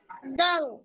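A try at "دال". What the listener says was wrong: ডালের পরে দাল বলবে কে? ডাল, ডাল এভাবে।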